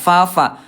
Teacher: Bibir dalam bagian bawah disentuhkan dengan ujung gigi seri atas ya. Ada udara fa. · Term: Huruf fa